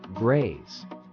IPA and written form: ɡreɪz (graze)